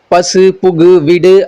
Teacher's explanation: ஒரு சொல்லோட இறுதியில வர அந்த ஊன்ற உகரம் வந்து தனக்குரிய மாத்திரை அளவில இருந்து குறையாம அப்படியே முழுமையா ஒலிக்கிறது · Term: முற்றியலுகரம்